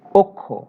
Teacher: ক্ষীয় যদি শব্দের শুরুতে থাকে তাহলে খ এর উচ্চারণ হয়, তবে মাঝখানে এবং শেষে থাকলে, এখানে শেষে মানে অ এর পরে, তাহলে প্রথমে আমরা পাবো ক এবং পরে পাবো খ। প্রথমে অঘোষ অল্প প্রাণ ক এবং পরে হচ্ছে অঘোষ মহাপ্রাণ খ এর উচ্চারণ পাবো